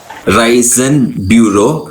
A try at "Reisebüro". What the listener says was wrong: Reisebüro, no N here.